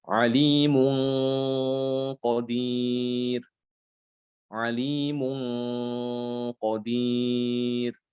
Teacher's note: Di sini gunahnya agak tebal. Gunah pada ikhfa itu di situ agak tebal karena yang datang setelah nun itu adalah huruf qaf. Qaf termasuk huruf tebal.